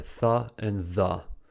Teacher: The tip of the tongue touches the upper teeth and protrudes between the teeth to produce the and th. They are fricatives. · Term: interdental consonants